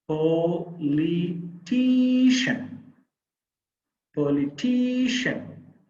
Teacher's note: The third syllable is the stressed syllable here.